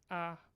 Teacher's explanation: ah which is low central or maybe low front